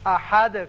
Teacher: احد ہے لیکن یہاں آیت ختم ہوتی ہے، لہذا دال ساکن ہو جائے گا اور اس کی صفت قلقلہ ادا کریں گے. احد کر کے پڑھیں گے.